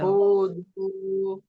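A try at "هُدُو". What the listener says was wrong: হুদু, হু দু বলবেন না, হু টানাবে না, হুদু।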